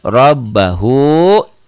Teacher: ro-nya dibaca tebal karena baris di atas. Rob nyamber dan double.